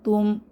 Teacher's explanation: এখানে নুন সাকিনের পরে তা এসেছে ইকফা গোপন করতে হবে